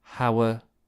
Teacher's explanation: it's a very short schwa where the lips are relaxed so or were those two words together sound like this hower · notice how level the pitch of my voice is. It's not going up or down. It's very level.